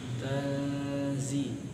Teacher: Pada kata tanzi di situ ada nun sukun bertemu dengan huruf zai, maka dibacanya gimana? Ikhfa. Jadi harus ditahan